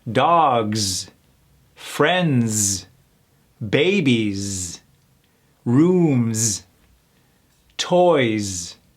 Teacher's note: plural form words ending with the S are also pronounced with a z